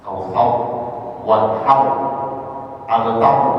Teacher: semua rok di akhir ayat surah Al-Kautsar dibaca dengan tafkhim